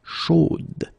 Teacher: You will have to put this final e, chaude, okay, at the end, and then the pronunciation will change a little bit, chaude. So here you pronounce the final d, whereas in the masculine form you don't pronounce it.